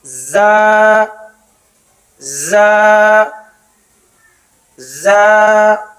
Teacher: زبان کی نوک جب نیچے والے سامنے کے دانتوں کی جڑ میں لگے تو ادا ہوتا ہے